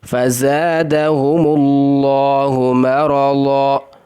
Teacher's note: لفظ اللہ کے لام کو موٹا پڑھنا ہے